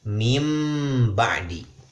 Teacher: Menjadikan huruf mim di tempat huruf nun. Maka pembacaan min tadi, min ba'di, kita ganti nunnya itu menjadi mim. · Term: iqlab